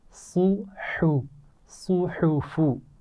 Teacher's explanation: صاد کو بھی موٹا پڑھیں گے لیکن ہا موٹا نہیں پڑھا جائے گا